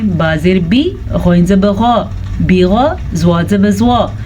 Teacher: غین کو پر پڑھیں گے، پھر زوات کو پر پڑھیں گے کیونکہ ان دونوں کے اوپر زبر ہے. جبکہ با کے نیچے زیر ہے تو اس کو بھی ہم کم مقدار کے ساتھ پڑھیں گے.